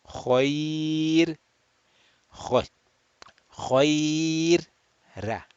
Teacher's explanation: because it is preceded by ya sakin or ya layyina actually, which is ya sakin preceded by a letter with a fatha, ra sakin will be read flat muraqqaq.